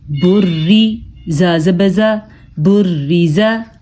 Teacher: را کو ہم نے باریک پڑھا ہے کیونکہ را کے نیچے زیر ہے۔ جب نا کے نیچے زیر ہو تو را باریک پڑھی جاتی ہے، جب را کے اوپر زبر اور پیش ہو تو را کو پر یعنی موٹا کر کے پڑھا جاتا ہے۔